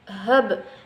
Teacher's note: Dia mantul tetapi nggak terlalu mantul banget seperti di ujung ayat atau disebut dengan qalqalah kubra. Nah, ini namanya adalah qalqalah sughra atau qalqalah kecil.